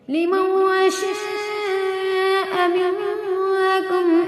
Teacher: لمن شاء میں جو ہے نون ساکن کے بعد شین جو ہے حروف اخفا میں سے، یعنی جو ہے یہاں پہ نون کی آواز کو ناک میں چھپا دیں گے